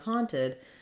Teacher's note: we have first syllable stress so the han syllable is long and has the clear vowel and then the second syllable is short and has a reduced if vowel